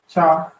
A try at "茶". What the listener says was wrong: It's cha with the second tone, but excellent.